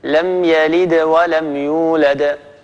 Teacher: مثلا لم يلد ولم يولد، هذا المقطع فيه يعني دالين كلاهما مقلقل، لكن الدالة الأولى كانت وسط الكلام بالتالي تكون في قلقلتها أقل وضوحا، وهذه هي المرتبة الثانية القلقلة الصغرى.